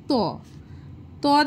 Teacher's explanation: যখন আমরা উচ্চারণ করছি ত তখন আমাদের জীবটা দেখো দাঁতে স্পর্শ করছে। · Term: দন্ত বর্ণ